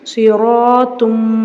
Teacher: சிரால ரா மேல ஜபர் இருக்கிறதுனால ராவ வல்லினமா ஓதணும்